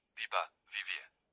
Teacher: bueno, vaso. Between vowels, they are pronounced more softly, similar to a gentle b sound